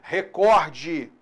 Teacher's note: A palavra recorde. Ela é paroxítona. Não é recorde, como alguns pronunciam aí.